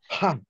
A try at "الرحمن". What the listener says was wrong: আহ এরকম। হ্যাঁ, হাহ না, হাহ বললে বুকের বুকের থেকে বাতাসটা বেরোলো, বাতাসটা বেরোবে ওই গলার ওই জায়গার থেকে। হ্যাঁ, যেমন আমরা যদি বলি হচ্ছে আহ, আর রহমান, রহমান, রহমান। হা, রাহ, এরকম একটা ঘ্যাস ঘেঁষে টাইপের আওয়াজ বেরোবে হা দিয়ে।